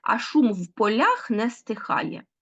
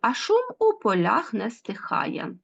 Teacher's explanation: бачимо що збігається аж три приголосних звуки